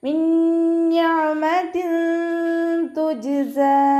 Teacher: നൂൻ സാക്കിനയ്ക്ക് ശേഷം നൂൻ തന്നെയാണ് വന്നിട്ടുള്ളത്, അപ്പോൾ ഇത് ആ ബിഉന്നയാണ്, ഉന്നയോട് കൂടി ലയിപ്പിച്ചിട്ട് മണിച്ചോതി കൊടുക്കുക